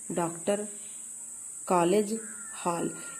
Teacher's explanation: यह ध्वनि आ और औ के बीच स्थिर है। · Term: आगत ध्वनि